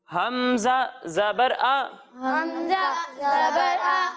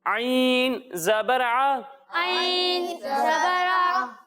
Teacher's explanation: جب ہم حمزہ کی ادائیگی کریں گے تو اس کی آواز حلق کے نچلے حصے سے آئے گی، اور جب ہم عین کی ادائیگی کریں گے تو اس کی آواز حلق کے درمیانے حصے سے آئے گی